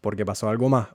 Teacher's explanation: Otra vez la s se pierde.